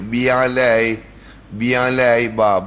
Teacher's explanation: Ba ni dia bersentuh bibir saja. Bibir kita bersentuh saja.